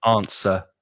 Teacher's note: forget about the w right with the schwa at the end